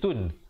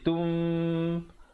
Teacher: Kemudian datang ba jadi tum. Bunyi nun ditukarkan kepada bunyi mim yang nipis kadar panjang 2 harakat. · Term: iqlab